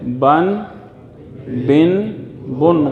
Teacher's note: نون کی آواز پیدا ہو رہی ہے، آخر میں نون ساکن یعنی نون غنہ کی آواز پیدا ہو رہی ہے، جیسے بن بن بن، غنہ ہو نہیں رہا، نون ساکن پیدا ہو رہی ہے، یہ آواز یہ ذہن میں رکھیں، نون کی آواز۔